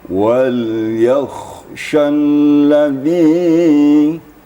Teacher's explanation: Ini ditenangkan ya. Setelah makhraj kha-nya itu tuntas, baru masuk kepada makhraj shin. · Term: kha dan shin